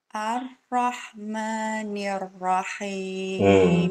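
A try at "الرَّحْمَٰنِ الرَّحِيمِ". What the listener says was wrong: Kurang. Tasdid huruf ro-nya, tasdid yang di huruf ro-nya kurang jelas. Ar-Rahmanir-Rahim.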